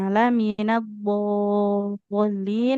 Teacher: minimalnya enam harakat, maksimal juga enam harakat. Eh, enggak boleh kurang, enggak boleh lebih.